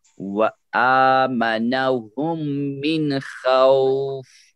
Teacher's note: نون یہاں پہ ظاہر ہوگا، اب یہاں نون نہیں چھپایا جائے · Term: اظہار